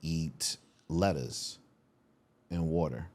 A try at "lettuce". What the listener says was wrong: Letters? Letters? I still think you're saying letters.